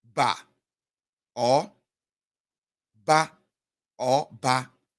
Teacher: the voice being raised, even or depressed respectively